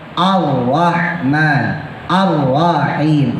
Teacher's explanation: itu rnya tebal monyong rada mencucu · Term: ro tebal, ro tebel